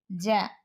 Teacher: జ నాదం అల్ప ప్రాణం తాలవ్యం స్పర్శోష్మం